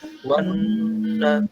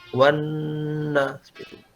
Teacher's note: nun yang bertasydid itu adalah gunnah akmal, gunnah yang paling sempurna